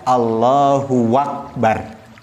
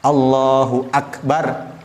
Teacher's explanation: Dan jangan menggunakan waw, tetapi menggunakan alif.